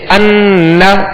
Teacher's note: ناک میں آواز لے جا کر ایک الف کی مقدار ٹھہریں گے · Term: غنہ